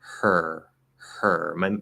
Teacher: i go through the sound no i'm in the ur position i start with breath for the h you can already hear it and then i just add the voice